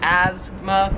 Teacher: we kind of say it more like a z sound like asthma where here it's more like a like an S sound like